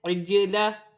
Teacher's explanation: جیم ساکن ہے، حرف قلقلہ میں سے ہے، قلقلہ کے ساتھ ادا کیا جائے گا